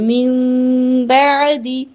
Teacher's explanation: اقلاب کرتے ہوئے میم کی آواز نکالنی ہوتی ہے نا نون کی جگہ، تو آپ نے نرمی سے ہونٹوں کو ملانا ہے